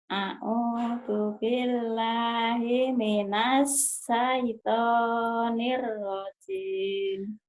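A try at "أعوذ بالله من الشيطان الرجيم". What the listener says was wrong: Shinnya mana? Hutang shin. A'udzu billahi minasy shin. A'udzu billahi minasy syaithanir rajim, ya, Bu. Iya, hutang shin ya. A'udzu billahi minasy syaithanir rajim.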